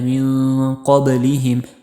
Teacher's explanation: من اخفا ہو گیا اور با پر قلقلہ۔